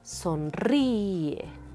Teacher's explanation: el sonido recae más fuerte sobre la i, por lo tanto, se rompió nuestro diptongo y se separan las sílabas